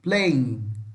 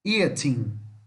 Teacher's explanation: Esse G final não pronuncia, tá? Nós falamos NH aqui.